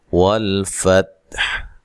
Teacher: والفتح، باؤ کو ادا کرتے ہوئے دونوں ہونٹوں کو گول کرنا ہے، لام کو ہلانا نہیں ہے، تا کو بھی ہلانا نہیں ہے، ٹھیک ہے۔ تو وقف کی صورت میں ہا ساکن ہو جائے گی، لہذا تا اور ہا دونوں کو اچھے طریقے سے پڑھنا ہے وقف کی صورت میں۔